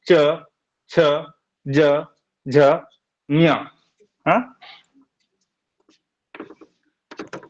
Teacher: जीभ को दांत के ऊपर जिसको तालू कहते हैं वहां पर थोड़ा टच होगा